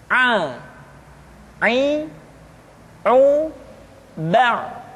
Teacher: huruf Aa dikeluarkan dari tengah-tengah tenggorokan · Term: huruf Ain